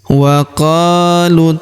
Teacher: huruf qo kita panjangkan dua harakat karena terdapat alif di depannya.